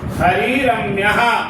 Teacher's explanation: हरिर हरिर रम्यः, ये हरिर में र के बाद र है, इस र का लोप हो जाएगा और ह्रस्व जो री है इसका दीर्घ हो जाएगा। हरिरम्यः ऐसा बनेगा।